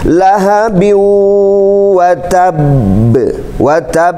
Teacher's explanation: untuk ayat 1 di akhir ayat jadi ada Qalqalah Kubro jadi ada huruf Qalqalah kemudian ada tasydidnya maka ketika dipantulkannya itu ada siddah dulu